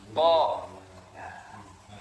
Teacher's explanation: lidah paling dalam nah di mana pangkal lidah paling dalam jadi Q itu tidak ditenggorokkan makhrajnya tidak ditenggorokkan atau bukan huruf halqi bukan huruf tenggorokan tetapi di Pangkal lidah bagian dalam · berdekatan dengan K kalau ko itu masih masuk huruf halqi tapi Q itu sudah naik sedikit sudah dipangkal lidah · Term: huruf q